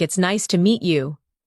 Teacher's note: When you listen to sentences like "It's nice to meet you," notice the rise and fall of the tone. The voice goes up slightly at nice and falls gently at you.